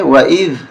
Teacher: زبان باہر نکالیں گے ذال پہ